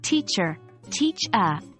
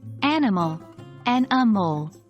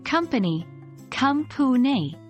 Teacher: the schwa sound is short and soft, almost as if you're mumbling the sound slightly